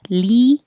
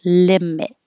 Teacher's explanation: the vowel is I as in hit. So the tongue's a little lower than if it were E.